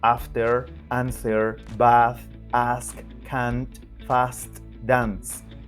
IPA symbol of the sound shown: ɑ: